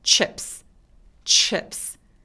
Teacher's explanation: 앞에 t가 붙은 건 뭐냐면 혀가 천장에 닿았을 때 그 티에서 시작하는 거예요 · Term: CH 소리